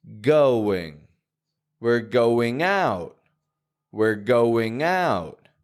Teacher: I'm not just saying going, but I'm getting a W right in the middle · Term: hidden W sounds